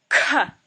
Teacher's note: Now we have the mahaprana. So you use a lot of air to pronounce this letter. Ka. There's no exact English equivalent for this letter, but if you would say blockhead, it's the k and h sound.